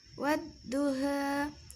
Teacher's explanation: pada ayat ke-1 ujungnya dibaca imalah jadi wadduha